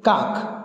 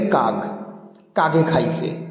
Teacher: শব্দের শেষে যদি অঘোষ ধ্বনি থাকে, সেটা ঘোষ ধ্বনিতে পরিণত হয়। যেমনি অনেকে কাক, কয়াকার ক, কাক, সেটাকে উচ্চারণ করে কাগ, কাগে খাইছে এরকম।